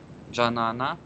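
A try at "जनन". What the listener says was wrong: Просто когда лже Леонид вы произносите, у вас получается как будто бы вторая А долгая, а третья краткая.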